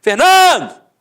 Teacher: a penúltima sílaba é a sílaba tônica portanto é uma paroxítona terminada em o tanto é que Fernando não tem acento e